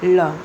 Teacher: ल जब बोलेंगे तो जीभ का जो नुकीला हिस्सा है वह तालू को छुएगा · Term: पार्श्विक व्यंजन